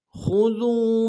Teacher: خا کو موٹا ادا کرنا ہے، ذال کو واو کے ساتھ ملانا ہے، واو مدہ ایک الف دال میں کھینچیں گے